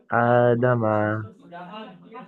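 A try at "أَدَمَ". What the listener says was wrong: আ দামা, বেশি করে টান দেবেন।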